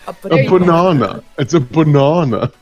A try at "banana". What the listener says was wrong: You forgot the R.